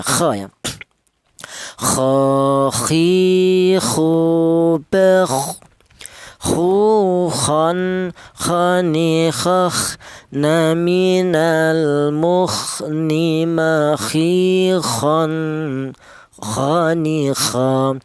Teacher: huruf berasal di tenggorokan bagian atas